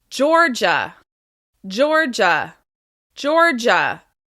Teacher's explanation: this is just two syllables, and it's stressed on the first syllable.